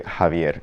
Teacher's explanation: So it's not ja, it's just an H kind of sound.